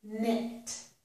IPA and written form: nɪt (knit)